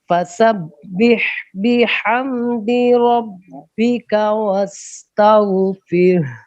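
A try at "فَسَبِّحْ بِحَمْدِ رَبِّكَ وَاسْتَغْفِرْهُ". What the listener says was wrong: پھر را کی آواز بھی آئے وستغفر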